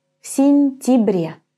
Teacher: when the ya is unstressed and it's in the middle of the word, it's going to be pronounced just as an e